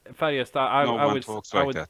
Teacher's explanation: So you don't pronounce the D at the end. It's Färjestad.